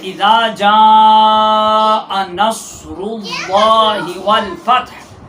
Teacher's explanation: 2 صفات اس صاد میں پائی جاتی ہیں، ایک صفت استعلاء اور اطباق، حروف مستعلیہ میں سے بھی یہ حرف ہے صاد۔